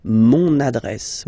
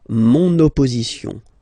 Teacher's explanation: Okay, another example, adresse, so same thing here, adresse is a feminine word, but then it starts with a, okay, same thing, you will have to use adjectif possessif masculin, mon adresse, my address, mon adresse, okay, you can hear now this little link, so you've got to pronounce this N